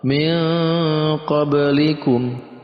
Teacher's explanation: Nun matinya samar, kita ganti dengan eng. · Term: ikhfa